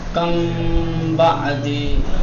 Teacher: لیکن میم ساکنہ میں جو اخفا ہے اس کا مطلب اور ہے. میم ساکنہ میں اخفا کا مطلب یہ ہے کہ میم کو تھوڑا کشیدہ بنا کر کے پہلے تلفظ کریں گے، ٹھیک، اس کے بعد با کا تلفظ کیا جائے گا.